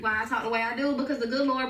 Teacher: A drool just means that the vowels are pronounced kind of long and sound like they're split into two syllables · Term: southern draw